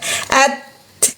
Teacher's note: Huruf ta, ujung lidah menyentuh pangkal gigi seri atas.